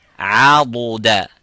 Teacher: make that sound pronounced from the edges and the sides of the tongue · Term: letter dad